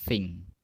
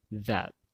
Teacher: Kalau kalian baca thing itu tidak bergetar, voiceless. Kalau yang that, nah ini bergetar.